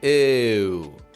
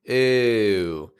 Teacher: one of the most difficult American accent sounds this tense close you